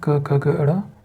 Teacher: क वर्ग कंठ्य वर्ग होता है।